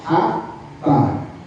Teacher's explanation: tempatnya atau makhrajnya di tengah-tengah tenggorokan